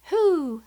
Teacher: At the beginning of that word, you hear the letter H sound. So, WH can really sound like the W is silent, just the H sound, as in who.